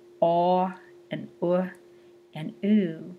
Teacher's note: as the jaw starts to raise back up, when we say ah and uh and oo, F1 goes back down with the raising of the jaw